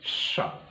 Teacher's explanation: तालु जिह्वा का नोक, बीच में गैप, श्वास रगड़ करके निकलेगी, सित्कार करती हुई निकलेगी, सर्प की तरह से एकदम सरकती हुई जाएगी। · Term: ईषद विवृत